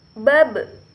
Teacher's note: ketika huruf ba ini berada di posisi mati, maka suara terdengar memantul